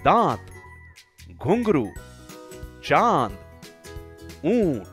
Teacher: इसकी ध्वनि नाक और मुंह से निकलती है। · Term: अनुनासिक